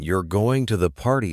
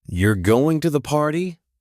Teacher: you're going to the party? question with a rising tone